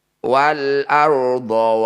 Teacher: ro sukun didahului fathah disebut bacaan ro tafkhim atau ro tebal bunyi rnya kurangi getarannya